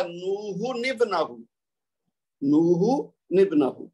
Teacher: اگلی مثال دیکھیے، نوح اور ابنہ، تو اس میں کیا ہو رہا ہے، نوح یعنی جو 2 پیش ہیں اس میں سے ایک رہنے دی یہاں اور دوسری پیش کی بجائے چھوٹی نون ڈالی اور اس کے نیچے زیر لگ گئی، تو یہ اب نون آگے ابنہ کے ساتھ ملائیں گے تو حمزۃ الوصل گر جائے گا اور نون کا با میں ادغام ہوگا، تو کیا بنے گا، نوح نبنہ، نوح نبنہ۔ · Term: نون کتنی